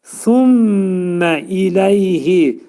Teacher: pəltək sə hərfi dil iki dişin arasına girərək xəfif şəkildə pəltək sə deməyə çalışmaq lazımdır.